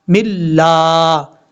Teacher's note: دو زیر کی تنوین کے بعد لام آ رہا ہے تو یہاں پہ ادغام ہو رہا ہے، لیکن ادغام کا غنہ نہیں ہو رہا